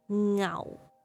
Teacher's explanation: the fourth tone is the lowest flat tone